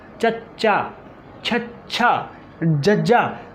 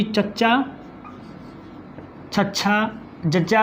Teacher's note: ਆਵਾਜ਼ ਜਿਹੜੀ ਸਾਡੇ ਅੰਦਰ ਰੁਕ ਗਈ, ਮੂੰਹ ਦੇ ਅੰਦਰ ਰੁਕੀ ਅਤੇ ਫਿਰ ਰੁਕ ਕੇ ਫਿਰ ਬਾਹਰ ਆਈ, ਤਾਂ ਇਹਦੇ ਨਾਲ ਕੀ ਹੋਇਆ ਸਾਡਾ ਜਿਹੜਾ ਉਚਾਰਨ ਹੈ ਉਹ ਰੁਕ ਗਿਆ। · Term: ਤਾਲਵੀ ਧੁਨੀਆਂ